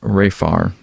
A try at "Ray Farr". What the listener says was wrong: That's Ray Farr, not Pray Farr.